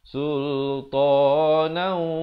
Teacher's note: Tapi kalau nak wasal jadi idgham bi gunnah di sini. Sultana, kena masuk beserta dengung 2 harakat